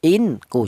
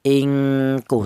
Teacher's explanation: In ya, ingku dibaca ikhfa, alasannya nun mati berjumpa dengan huruf kaf, di mana huruf kaf ini termasuk hurufnya ikhfa. Ini cara bacanya nun mati ini disamarkan ya, dibaca ikhfa, jangan dibaca jelas atau idhar.